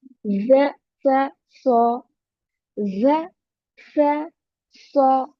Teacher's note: तीनों में buzzing sound आएगा, सीटी का साउंड आएगा।